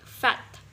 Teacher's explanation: Second, if we are talking about labiodental, there is obstruction with the top teeth on the bottom lip